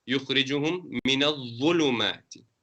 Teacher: The second one, min al-dhulumati, is with a round mouth.